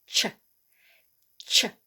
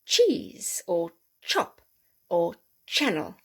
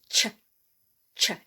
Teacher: it's a plosive sound we hold the air back in our mouth and we release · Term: hard ch sound